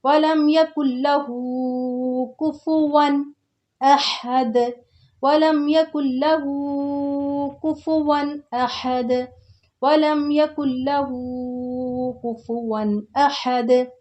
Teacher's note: नून जो बीच में साकिन आ रही वो नहीं पढ़ी जाएगी। इसकी वजह ये होती है कि जब साकिन के बाद तशदीद वर्ड आता है तो वो साकिन जो वर्ड होता है वो स्किप हो जाता है, साइलेंट हो जाता है।